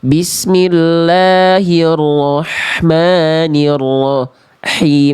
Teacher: [mendengus] Bismillahirrah itu H besar harusnya H kecil ya. Nafasnya lebih berbisik.